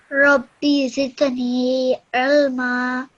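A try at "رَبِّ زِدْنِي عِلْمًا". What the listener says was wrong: Excellent, well done.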